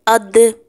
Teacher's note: تھوڑا سا آواز کو دبانا ہے، تھوڑا سا دبا کر باہر نکالنا ہے، پہلے اق پر رک کر پھر باہر نکالنا ہے آواز پر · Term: قلقلہ